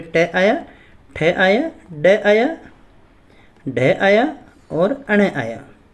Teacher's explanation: इन सभी का जो उच्चारण स्थान होता है मूर्धा। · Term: मूर्धन्य वर्ण